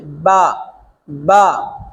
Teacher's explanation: ان کا مخرج با دونوں ہونٹوں کے تر حصے سے، دونوں ہونٹوں کے تر حصے سے، با، با، دونوں ہونٹوں کے تر حصے سے ادا ہوتا ہے